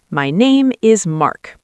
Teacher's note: But confident English usually goes down at the end, right? Yes, falling intonation signals, I am finished, I am sure of this statement.